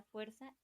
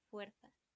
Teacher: Hay diferencias dialectales, pues en México utilizamos una fricativa alveolar sorda s, mientras que en España se utiliza una fricativa interdental sorda f. Esto quiere decir que da fuerza y fuerza.